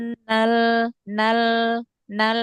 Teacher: Nal Fa tekan innal suaranya ke bawah. Tekan suaranya ke bawah, nal, ya. jangan ke atas.